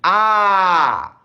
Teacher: আ সব থেকে বেশি খোলা থাকে এটা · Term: বিবৃত স্বরধনি